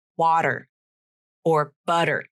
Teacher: when a word or syllable ends in a t consonant and the t is between vowels and the second vowel is unstressed it's in an unstressed syllable the T becomes the flap